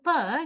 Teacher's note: When we want to say P, we first close tightly both lips and then release P. Then this blocked air stream is released quickly.